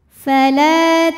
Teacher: auzubillahiminasyaitanirrajim [Musik] Bismillahirrahmanirrahim Fala la hukumnya adalah Mad Thobi'i dahiri sebab ada Alif yang sebelumnya berharakat fathah maka huruf lam panjang dua harakat